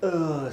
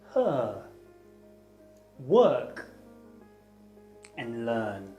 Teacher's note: the words her work and learn it's a vowel sound and its technical name is the mid central unrounded vowel